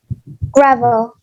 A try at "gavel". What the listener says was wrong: Not gravel. Gravel is dirt with rocks mixed together. No R. Gavel. Yes, gavel.